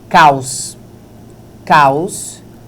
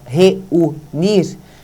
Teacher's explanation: Perceba que a gente abriu a boca uma vez só, porque o queixo só se mexeu uma vez. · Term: ditongo